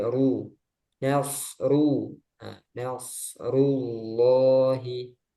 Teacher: ro juga sama seperti lam kadang dia dibaca tebal kadang dibaca tipis nah ro domah dia tebal